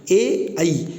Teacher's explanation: ए ऐ बोल करके देखेंगे आप तो कंठ का भी प्रयोग होगा और तालु का भी प्रयोग होगा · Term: कंठ प्लस तालु